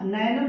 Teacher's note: जब हम नयनम शब्द का उच्चारण करेंगे तो अय की ध्वनि निकल कर आ रही है